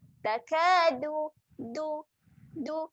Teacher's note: hujung lidah belakang gigi atas. Jadi bunyi dia lembut je. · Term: huruf dal